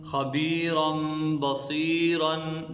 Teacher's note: خا زبر خا، با یا زیر بی، خبی، را میم دو زبر رم، خبیرم، با زبر با، خبیرم با، صاد یا زیر سی، خبیرم بصی، را دو زبرن، خبیرم بصیرن۔ دیکھیں اس میں نون تنوین کو ہم نے میم سے بدل دیا اور اقلاب میں غنہ بھی کرنا ہے